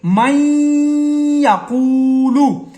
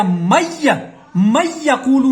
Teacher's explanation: نون کی آواز کو ناک میں رکھیں گے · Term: غنہ